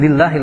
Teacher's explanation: lafadz Allahnya kembali dibaca dengan bacaan tarqiq yaitu tipis. Lillahi, lafadz Allahnya la-nya termasuk hukum tabi'i.